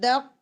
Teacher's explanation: دا کے بعد فوراً آپ نے کپ بنانا ہے، اور جو ڈیپسٹ پارٹ آف ٹنگ ہے وہ اوپر ٹچ ہو جائے گا سافٹ پیلیٹ پر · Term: اخفاء